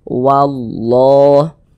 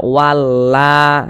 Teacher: fathah Jadi kalau ada lafaz Allah sebelumnya ada harakat fathah maka lafaz Allahnya dibaca tebal dibaca tkhim huruf lam yang di tengahnya nih huruf lam jalalahnya tuh dibaca tebal dibaca tkhim sehingga kita baca wallah Jangan dibaca walla jangan tapi ditebalkan wallah · Huruf lam yang di tengahnya nih, huruf lam jalalahnya tuh dibaca tebal, dibaca tabkhim, sehingga kita baca wallah.